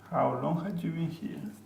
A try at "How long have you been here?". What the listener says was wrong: There's no H, look.